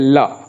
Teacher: जब ल का उच्चारण किया जाता है तो कहा ऐसा जाता है व्याकरण में कि होंठ के दोनों किनारे से हवा बाहर निकलती है। जैसे ल, आप 1-2 बार बोल करके उसका प्रत्यक्ष भी करने की कोशिश करिए, तो ल बोलेंगे तो नो डाउट दोनों किनारों से ही हवा निकलेगी, तो बगल से, पार्श्व से उसके, इसीलिए इसको बोला जाता है पार्श्विक।